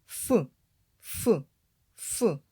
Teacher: зімкнулися зуби з губою і не випускають звук ф ф ф що створює перешкоду в роті верхні зуби та нижня губа